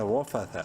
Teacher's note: را زبر را، منہ بھر کے پڑھیں گے زبر کی وجہ سے، فا زبر فا، تھا زبر تھا، تھا کو پراپر اپنے مخرج سے یعنی زبان کی نوک سامنے والے دانتوں کے بیچ میں لگا کر پڑھنا ہے